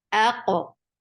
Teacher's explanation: Hamza is very sharp for fatha open your jaws, attach with qaf. Qaf will get sifa of qalqala, and it is heavy. Aqo. Da will be light, and it is 2 counts long.